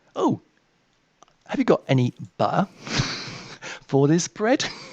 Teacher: I've got what's called a glottal stop because I come from Norfolk. · When they talk, they don't pronounce their T's.